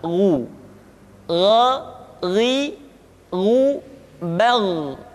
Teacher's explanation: Kha mengalir nafas dan G tidak mengalir nafas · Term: huruf gho